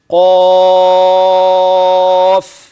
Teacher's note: القاف مفخمه وفي اعلى مراتبها فالالف الذي بعد القاف في النطق تابع للقف والقاف مفتوحه فدي مرتبه عاليه من مراتب التفخيم ثم بعدها الف